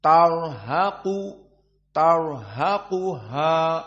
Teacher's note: jumhur sebelumnya fathah tar mufakhamah haqu ha ha dan qof maka ha muraqoqoh dan qof mufakhamah maka dijepit ha antara dua tafkhim